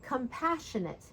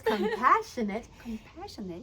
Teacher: So the passionate part, it's where we put the stress, and it's also where we raise the pitch of our voice.